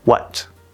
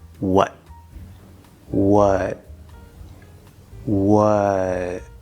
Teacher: this word is just the w sound plus the schwa sound plus a t